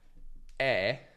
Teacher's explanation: E è una vocale anteriore, medio-bassa e non arrotondata. La lingua è in avanti, ma più in basso rispetto alla E chiusa. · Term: aperta